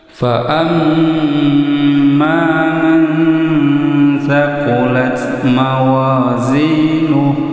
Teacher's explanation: Di sini ada mim tasjid. Ini disebut dengan gunnah. Suara di ayun, dibaca dengung panjang 2 harokat.